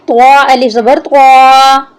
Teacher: طوا کو ہم موٹا کر کے پڑھیں گے۔